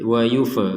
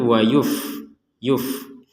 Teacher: Ini fa sukun jangan dipantulkan.